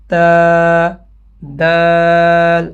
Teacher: زبان کی نوک اوپر جو ہے نا وہ ثنایا کے اوپر مسوڑوں پہ لگ رہی ہوتی ہے. تو اب ان کو مسوڑے ثنایا ان چیزوں کی بتانے کی ضرورت نہیں ہے، ان کو صرف اتنا پتہ ہو کہ زبان کی نوک ہمارے اوپر کسی جگہ پہ لگ رہی ہے.